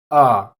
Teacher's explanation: the so-called A schwa, which is a duller, more centralized A